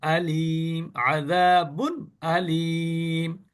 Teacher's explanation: তানভীনের পরে যদি আসে তানভীন তাহলে ওই নুন সাকিনের নুনকে অথবা তানবিনের মধ্যে যে লুকায়িত নুন এই কোন নুনকে গুন্না করা যাবে না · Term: ইজহারের